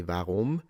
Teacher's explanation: Many of them are rolling it into a R, but of course, the German girl, at least High German specifically, her variation, she pronounced it like basically with the French, the uvula, the R sound